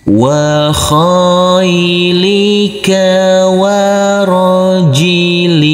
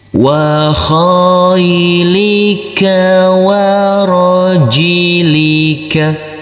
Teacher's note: Huruf kha yang berfathah a ini bertemu dengan huruf ya sukun harus kita lembutkan karena ini adalah bacaan lin atau bacaan lain. Wa khailika.